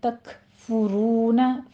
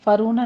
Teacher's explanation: کاف کے پر ہمس کریں گے اور فا کے پر ضمہ ہے، ہونٹ گول کر دیجیے